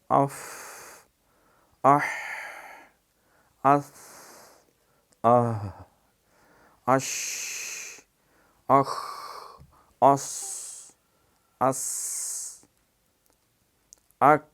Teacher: تو ان حروف کو اب کیسے پتہ چلے ان کی یہ صفت جو ہے، یہ ہمس جو ہے وہ ادا ہوتی ہے کہ اس کے ادا کرتے وقت آواز میں مخرج میں ایسی پستی کے ساتھ ٹھہرتی ہے کہ سانس جاری رہتا ہے، یعنی سانس جاری رہتا ہے۔